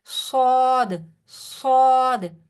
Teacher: from حروف مستعلیہ، ٹھیک ہے، یہ بھی پر پڑھا جاتا ہے، زبان پیچھے سے اٹھے گی، صاد میں بھی تھوڑی سی سیٹی ہوتی ہے